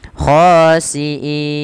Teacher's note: Kita memanjangkannya boleh 2 harokat, boleh 4 harokat, boleh pula 6 harokat. Kita ambil yang 4 harokat yang tengah-tengah saja, tidak terlalu panjang dan tidak terlalu pendek. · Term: mad arid disukun